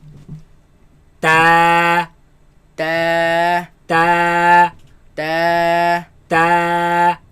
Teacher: Now this letter comes from the front flat part of the tongue against the roots of the teeth.